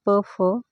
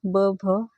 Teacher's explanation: प फ हे कठोर वर्ण ब भ हे मृदू वर्ण आणि म हे अनुनासिक